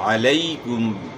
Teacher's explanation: یا ساکن سے پہلے زبر ہے تو یائی لین کو اپ نے نرمی سے پڑھنا ہے بغیر جھٹکے کے پڑھنا ہے